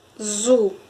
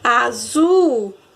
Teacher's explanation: o zu vai sair mais forte, então o zu é a sílaba tônica dessa palavra, certo? Então ela está aí na última posição da palavra.